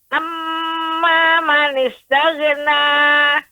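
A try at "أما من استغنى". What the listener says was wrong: Nah, ghain ini tidak boleh ketika sukun, tidak boleh memantul. Taghna, nggak boleh taghna Ibu. Yang benar taghna. Amma man istaghna. Taghna. Dia tertahan. Taghna.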